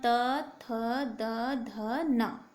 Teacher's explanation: तवर्ग में आप जानते हैं कि जीभ दांतों से टकरा रही है, तब जाके हमारा त, थ, द, ध, न ये आ रहे हैं।